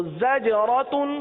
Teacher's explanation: اب یہاں جیم کا قلقلہ ہے اور زا بھی ہے. عموماً جب زا اور جیم کو ملایا جاتا ہے تو جیم کا قلقلہ عموماً چھوڑ دیا جاتا ہے